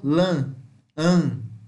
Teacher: ele ficaria um A já um pouco semiaberto, já indo para uma área mais central. Veja, como se estivesse indo para a parte central, o som.